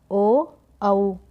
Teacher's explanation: ओ और औ को हम कंठ और ओष्ठ दोनों से बोलते हैं। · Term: कंठोष्ठ्य